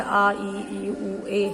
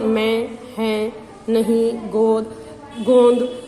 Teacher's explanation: उनको बोलने के लिए हम मुह और नाक दोनों का इस्तेमाल करते हैं व दोनों से मुंह से और नाक से दोनों से आवाज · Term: अनुनासिक स्वर